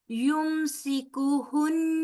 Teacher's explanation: یمسکہن، یا پیش میم یم اور سیکو ہن، نون مشدد ہے لہذا یہاں پر غنہ ہوگا. یمسکہن، نون جو ہے وہ لمبا نہیں ہوگا، صرف نون پر غنہ کر کے آگے اس کی پڑی حرکت کو بلائیں گے. یمسکہن ٹھیک ہے، لام جو ہے الف حمزہ لام کے ساتھ ملے گا اور لام جو ہے آگے جا کے را کے ساتھ مل جائے گا.